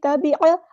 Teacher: عین کو مستحلق یعنی مڈل تھروٹ سے ادا کریں گے ، تبع، عین کو لمبا نہیں کرنا، ہدایا، ہاں سمپل ادا